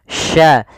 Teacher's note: Sya ini bagaimana cara pelafalannya dari tengah lidah kita, karena makhrajnya dari tengah lidah. Sya. Dan sya memiliki sifat namanya tafashi. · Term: huruf sya